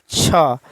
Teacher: तालव्य महाप्राण अघोष व्यंजन वर्ण का उदाहरण है छ। जिन वर्णों का उच्चारण तालु और जीभ के स्पर्श से होता है, ठीक है, जिन वर्णों का उच्चारण तालु और जीभ के स्पर्श से होता है उसे क्या कहते हैं, तालव्य, ठीक है, महाप्राण।